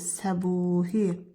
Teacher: Səbuhi sözündə isə səbuhi u uzun tələffüz olunur.